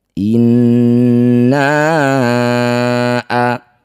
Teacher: Dengungkan bunyi nun 2 harokat. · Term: gunnah musyaddadah